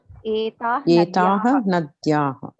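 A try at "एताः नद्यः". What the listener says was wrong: Nadyaha. There is no dirgham.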